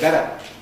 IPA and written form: ˈbeɾə (better)